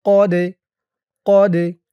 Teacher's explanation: দালটা কলকলার হরফ, ধাক্কা দিয়ে পড়তে হবে